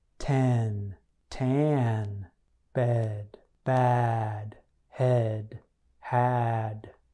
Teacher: To make both the eh and ah sounds, your tongue should be closer to the floor of your mouth. But with the ah sound, your tongue should be flat on the floor of your mouth, and your jaw should be lower.